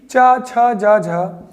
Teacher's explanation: इसलिए होते हैं चा, छा, जा और झा क्योंकि स्पर्श में है और घर्षण के साथ बोले जाते हैं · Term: स्पर्श संघर्षी